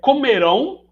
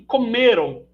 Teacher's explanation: comerão oxítona e comeram paroxítona